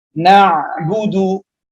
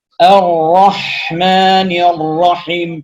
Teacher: tidak benar seseorang yang membaca antara huruf ain dan ha ini kadar alirannya sama